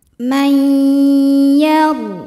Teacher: Huruf ra sukun dibunyikan secara tafkhim karena huruf sebelumnya berharokat fathah. Maka ra-nya tebal. · Maka nun sukun dileburkan ke ya may disertai bunyi dengungan. Jadi kita tahan. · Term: idgham bi gunnah